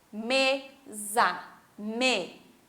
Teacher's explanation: eu tenho a penúltima sílaba, mesa, me, é a mais forte, ok? Porque eu não falo mesa, falo mesa. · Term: Paroxítona